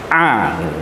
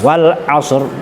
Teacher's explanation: Untuk lafat wal asri itu ada huruf ain. Ain itu makhrajnya berada pada al-halaq atau tenggorokan. Maka kalau saya biasa ngomong ke teman-teman santri, itu dengan bahasa yang mudah adalah ngeden.